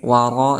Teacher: di sini ada ra berharakat fathah, maka dihukumi sebagai tafhim, artinya tebal